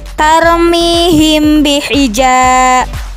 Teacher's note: Penjelasannya yaitu apabila mim mati bertemu dengan huruf ba, maka mim tersebut disamarkan ke dalam huruf ba disertai dengan suara dengung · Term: ikhfa syafawi